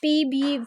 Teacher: we close both the lips and then release the sound. अच्छा, जब हम अपने लिप्स को क्लोज करते हैं और रिलीज करते हैं साउंड p b, ठीक है, इसमें हमारे जो हैं लिप्स वो मिल रहे हैं, तो ये कांस्टेंट साउंड होगी.